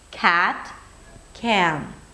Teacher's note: In American English, when the A appears before a nasal sound like an M or an N, we stretch it out. It's like we're adding an S sound before or a schwa sound right after.